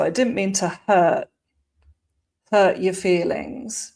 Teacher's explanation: with didn't, we've got the glottal T at the end